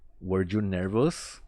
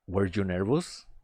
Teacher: hacia el final tiendo a elevar la entonación de mi pregunta